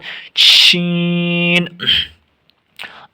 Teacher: زبان کا بیچ اور اس کے مقابل اوپر کا تالو